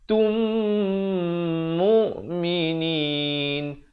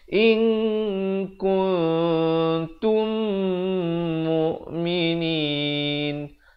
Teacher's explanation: idgham mislan saghir, mim mati bertemu mim didengungkan 2 harakat.